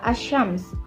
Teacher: ke saling berpengaruh secara total secara keseluruhan contohnya ada kata as-syams kata as-syams tersebut kita lafalkan dengan menghilangkan total huruf lam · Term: asimilasi total